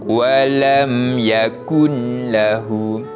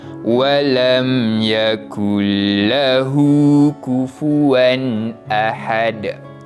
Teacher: kita memasukkan bunyi bacaan nun mati kepada huruf selepasnya, iaitu huruf lam, dan di sini jangan baca dengan bacaan dengung, tetapi kita tahan seketika pada huruf lam tu. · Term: idgham bila gunnah